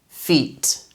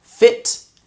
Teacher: Remember, with these sounds, you want to make a difference between short sound, I, and a long sound, E, and your mouth is going to be a lot wider with E compared to I